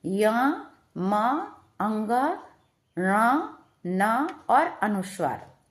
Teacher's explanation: यानी य म अंग ण न और अनुस्वार इन सभी का उच्चारण स्थान क्या हो गया है नासिका यानी कि नाक से बोले जाते हैं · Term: नासिक के वर्ण